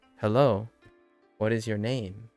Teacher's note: What is your name? With the emphasis on name.